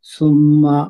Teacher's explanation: میم مشدد ہے، اس کا غنہ کریں گے، 2 حرکت لمبا کریں گے